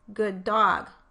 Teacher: sometimes sounds are shared across two words, like in the phrase good dog. The problem here is that I only produced one D in good dog, and if I put a space between the words in my phonetic transcription, I would have to decide if that D belonged to good or dog, when really it belongs to both of them.